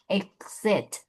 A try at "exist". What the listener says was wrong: No, exist. No, zist. There's an S. No, you're saying exit. Exist. You said it again, the same exact thing. Exist.